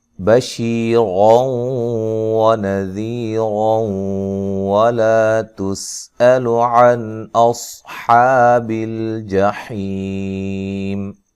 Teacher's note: واو کو ادا کرتے ہوئے ہونٹوں کو گول کرنا ہے